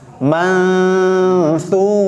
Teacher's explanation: Dengungnya terdengar, ikhfa'nya pun terdengar. Nunnya terdengar sedikit-sedikit. Kita sudah persiapan huruf fa. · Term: ikhfa awsat